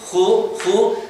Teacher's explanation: Si hace ji, notas como la J es velar, pero se hace más adelantada. Si haces una ju, la J ya se va hacia atrás